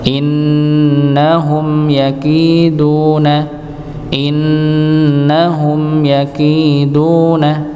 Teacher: innahum mim sukun ketemu dengan huruf ya. Nggih. Maka dibaca jelas. Nggih. Dibaca jelas.